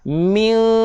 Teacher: nun berjumpa dengan shin. Dengung dua harakat, dengung NGG. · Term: ikhfa hakiki